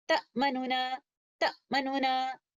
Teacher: you can hear both of the letters clearly, the first letter noon and the second letter noon, but I am reciting the first letter noon, which is with dhamma, with ikhtilas.